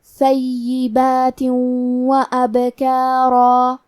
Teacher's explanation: کلمت ابکارا میں حرف البا پہ جزم ہے تو ہمیں با کو قلقلہ سے پڑھنا ہے